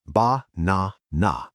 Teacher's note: In Spanish, banana is ba-na-na. You hear the ah 3 times perfectly. In English, we change the vowels to make them faster.